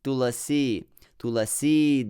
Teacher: stress the second syllable more because it's long and the long is heavy to be stressed